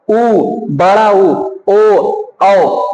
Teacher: वर्तुल या गोलाकार या वृत्तमुखी में पूरा मुंह खुलेगा और गोल बनेगा